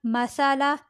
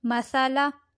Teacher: لام زبر لا، مسالا، یہاں پر سا ہے، سا زبان کی نوک سے باریکی سے ادا ہوتا ہے